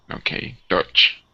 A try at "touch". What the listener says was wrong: Good, nice job.